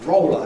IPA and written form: ˈrɒolə (roller)